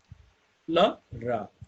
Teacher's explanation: La and Ra produced by causing some of the obstructions of the airstream in the mouth, but not enough to cause any real friction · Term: liquids